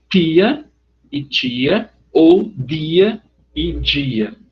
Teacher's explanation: As consoantes D e T, em algumas formas dialetais do português do Brasil, tornam-se Ch e J quando diante de I.